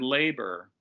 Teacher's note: turn into a schwa oh for instance in the word labor that first vowel that long a is stressed but the second vowel is not so it's pronounced kind of like a schwa